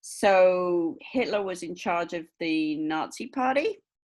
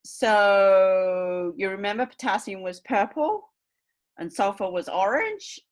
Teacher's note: of a teacher pretending that students know this stuff already so using Rising tones because they want it to appear more familiar